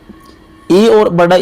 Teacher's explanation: इ और बड़ा इ का उच्चारण स्थान क्या है? ये तालु से बोले जाते हैं।